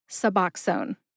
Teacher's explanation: Put all three syllables together and you get suboxone. Emphasize that middle syllable, which is ox. It sounds like box when you say the drug name quickly.